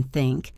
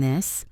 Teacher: the unvoiced th like in think and the voiced th like in this. The mistake many people make is keeping their tongue behind their teeth.